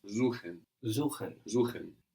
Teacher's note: So an S vowel syllable gives us a Z sound.